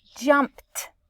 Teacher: jumped sounds like there should be a t at the end of jumped